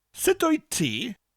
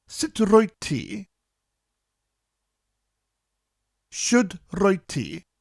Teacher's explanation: In the sentence sit o'i ti, should o'i ti, it's actually roit, with an R at the front of the word. But in conversation, most people drop the R, which is why I'm teaching you the word without the R.